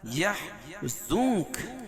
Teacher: زنک میں اخفاء حقیقی ہے کیونکہ نون ساکن کے بعد حروف اخفاء کے 15 حرفوں میں سے کاف ہے